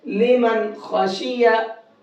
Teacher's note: तो नून साकिन के बाद में जब ये खा आया यहाँ पर, तो अब इस नून को साफ साफ पढ़ेंगे, गुन्ना इख्फा नहीं करेंगे। कैसे पढ़ेंगे, लिमन खाशिया, और लोग गलती क्या करते हैं, लिमन, अब इसको नाक में पढ़ते हैं, नाक में नहीं पढ़ना है। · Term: इजहार